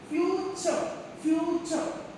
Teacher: when it is an adjective, we have to stress on the first syllable